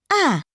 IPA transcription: æ